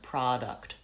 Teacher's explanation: So let's look at what happens with these words. Product, I have a pure vowel on ah, it's lengthened, and the second syllable is shorter, product. Production, I have the stress on the middle syllable, it's lengthened, and this first syllable, that changes to vowel schwa.